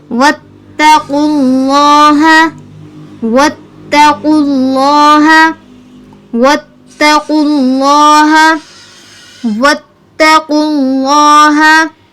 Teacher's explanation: یہاں پر قوف پر تفخیم آئی، لفظ اللہ پر تفخیم آئی